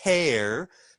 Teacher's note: I don't turn on my voice until I get to the air part.